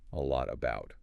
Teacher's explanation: Tongue stops the air before the next word. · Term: Stopped T